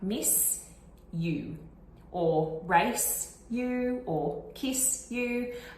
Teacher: when you speed up these words and you say them very, very fast, one after the other, it can start to approximate a nice little SH sound